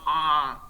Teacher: stiff voice it's produced with really tense uh vocal chords and on the vocal tract and it's like instead of high